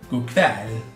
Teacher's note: la pronuncia della parola kväll, la E, mi raccomando, bella aperta